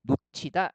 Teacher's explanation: 받침 히읗 같은 경우는 음절의 끝소리 규칙에 따라서 어떻게 디귿으로 발음이 됩니다. 그래서 놓치다 해가지고요.